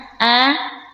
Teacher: Huruf hamzah jahara tidak boleh keluar napas, berarti bunyinya jelas. A. Yang kedua dia syiddah, huruf yang kuat karena menahan suara.